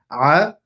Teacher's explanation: The ayn, it is not a hamza, so the ayn is going to come from the throat area.